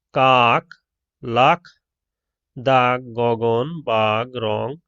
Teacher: জিভের পেছনের অংশ উঁচু হয়ে আলজিভের মূলের কাছাকাছি নরম তালু স্পর্শ করে জিহ্বামূলীয় ব্যঞ্জন উচ্চারিত হয়। যেমন কাক, লাখ, দাগ, গগন, বাঘ, রং শব্দের ক, খ, গ, ঘ ও এই জাতীয় ধ্বনি।